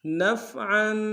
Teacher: کریں گے لکم نفعا نون کو فا کے ساتھ ملانا ہے عین کے اوپر تنوین غنہ کریں گے